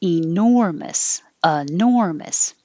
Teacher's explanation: most likely it will change to uh with the e enormous the important part is the stressed syllable nor because that's what you're really stretching